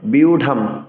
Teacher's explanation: শব্দের শেষে থাকবে অনুসার উচ্চারণ ম হসন্ত করতে হবে।